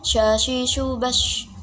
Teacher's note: shin ini keluarnya di tengah-tengah lidah dan langit-langit lidah